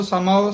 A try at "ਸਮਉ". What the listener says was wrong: ਸਮਉ ਉਚਾਰਨ ਕਰਨਾ ਸਮੋ ਨਹੀਂ ਕਹਿਣਾ ਊੜਾ ਹੈ ਔਂਕੜ ਲੱਗੀ ਹੈ ਬੰਦ ਮੂੰਹ ਵਾਲਾ ਊੜਾ ਹੈ